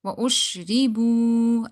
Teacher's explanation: Wow is silent, before that there is samma, so you need to stretch it. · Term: Mad